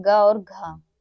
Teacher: ग और घ ये हमारे कंठ से उच्चारित होते हैं